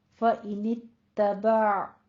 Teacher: आइन को वस्ते हलक में रोक लेना है, बा नहीं कहना, कलकला नहीं करना।